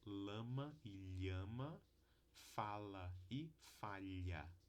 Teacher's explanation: laterais que também são articuladas desviando o fluxo de ar aqui a gente usa a ponta da língua para impedir que o ar passa pelo centro da língua e o fluxo de ar é desviado pelas laterais da língua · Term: consoantes laterais